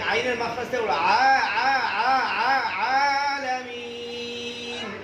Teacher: সামাইন বলো, সামাইন বলো। আ বলবা না, আইন আইন আইন, আইনের মাখরাজ থেকে বলো।